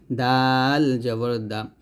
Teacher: দাল হচ্ছে জিহ্বার আগা সামনের উপরে দুই দাঁতের গোড়ায় লাগিয়ে দাল পাতলা উচ্চারণ করতে হবে দাল জবর দা তাহলে এটা হবে দবর ল আর এটা দাল